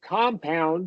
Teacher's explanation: Conversation, information, or compound, more specifically, where there's two vowels, right. but the first syllable is getting the primary stress and pitch. · pitch goes up for the first uh one